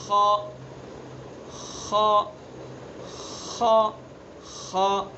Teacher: ذرا منہ کی طرف سے ادا کریں گے، حلق کے بیچ میں سے نہیں بلکہ آگے سے ادا کریں گے، اگلے والے حصے سے.